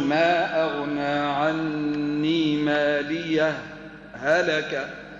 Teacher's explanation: بنفس الصوت بنفس النفس لكن نعمل سكتة لطيفة